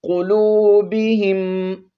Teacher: ہا کے نیچے جو زیر ہے اس کو ہم نے میم مشدد کے ساتھ ملانا ہے، قاف کو موٹا پڑھتے ہوئے